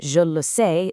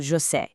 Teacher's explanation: They swallow that letter e, meaning je le sais speeds up into je sais.